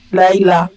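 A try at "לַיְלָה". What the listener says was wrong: Voilà. Laïla.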